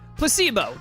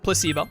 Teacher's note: the stress is on the middle syllable